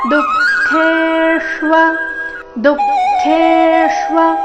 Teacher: ಖೇ ದೀರ್ಘ ಬಂದು ನಂತರ ಆಘಾತ